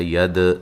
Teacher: دال پہ قلقلہ کرنا ہے